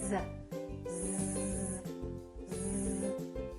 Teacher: Do you feel a vibration on your vocal cords? You do. That's because z is a voiced sound. We're using our vocal cords.